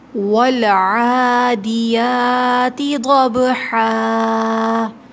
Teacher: ول لام ساکن ہے، لام پہ ہولڈ کریں گے تھوڑی دیر، عین کے اوپر کھڑا زبر ہے، 2 کاؤنٹس کھینچیں گے۔